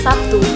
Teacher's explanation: pada kata Sabtu, fonem B diucapkan sebagai P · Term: alofon